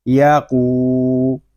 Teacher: قاف کو ہم پر پڑھیں گے کیونکہ قاف حروف مستعلیہ میں سے ہے